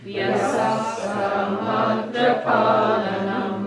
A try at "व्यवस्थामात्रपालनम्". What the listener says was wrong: Yeah, one V got eaten up. Vyavastha matra palanam.